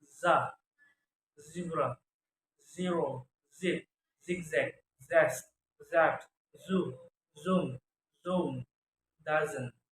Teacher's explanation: Voice alveolar fricative sound